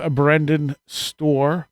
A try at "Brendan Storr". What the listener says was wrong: Brendan Storr, no D, but close enough.